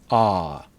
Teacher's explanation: When we have one o in a word, usually we say ah, like in lock and hot. Ah is very open and very far back.